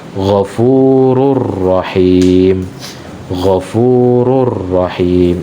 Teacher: Jadi sangat jelas tidak ada suara gunnah